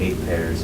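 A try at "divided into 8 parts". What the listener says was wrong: 8 parts, not a pair.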